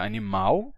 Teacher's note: Entre as consoantes, a gente não tinha tido a transformação de L em U, que acontece na maior parte do Brasil, em que a gente pronuncia animal, certo?